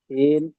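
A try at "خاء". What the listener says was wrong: না, সিন নয়, এটা হবে খ। কি বলবেন?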